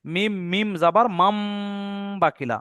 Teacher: নুন সাকিনের পরে বা হওয়ার কারণে এই নুন সাকিনটাকে বাদ দিয়ে ছোট্ট মিমটা ধরবো। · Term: ইকলাব